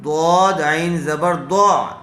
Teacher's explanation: ضاد کو پر کیجیے، ضاد کو عین سے ملا کر پڑھیں گے اس لیے کہ عین کے اوپر جزم ہے۔